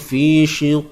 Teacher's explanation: Qalqalah kubra, qalqalah yang besar, lantunan besar lah. Jadi yang saya nak ingatkan, jangan bunyi hamzah, itu je lah.